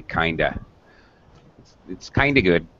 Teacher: it's kind of good sounds like one word actually